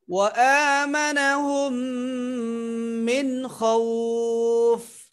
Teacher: মিম সাকিনের পরে মিম, মিম সাকিনের ইদগাম আবার ওয়াজিব গুন্না, ওয়াজিব গুন্নার মতো করা যায়।